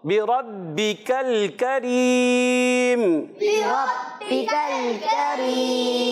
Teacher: با کے نیچے زیر ہے، بغیر کھینچے، حرکات کو بغیر کھینچے ادا کرتے ہیں، اور را پر پھر زبر آیا اس لیے موٹا پڑھیں گے۔ اور پیارے بچوں یہ بات جو ہے تھوڑا سا رک کر اور جماؤ کے ساتھ، کیونکہ حرف قلقلہ والا ہے، تھوڑا رک کر ادا، مشدد حرف کوئی بھی آئے تو اس کو ہمیشہ تھوڑا رک کر ادا کر دیں، اور حرف قلقلہ کا ہو تو تھوڑا جماؤ بھی ہو جاتا ہے۔